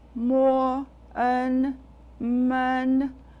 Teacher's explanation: That gives us the compound final, en. Men has a neutral tone. I pronounce the syllable for you, mo, en, men, neutral tone, men.